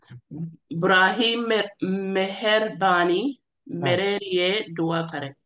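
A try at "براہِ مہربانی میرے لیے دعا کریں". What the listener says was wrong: That's right. Shabash.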